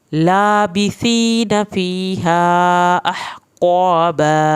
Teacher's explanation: लाम की खड़ी ज़बर की वजह से ये लंबा होगा। लाबिसीन, सा को दांतों की नोक से पढ़ना है, या साकिन को खींच के पढ़ना है।